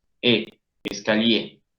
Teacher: O sea, la R enmudece, pero al acompañar a la E hace que la E suene plenamente. · esa E final suena como nuestra E porque está acompañada por una R.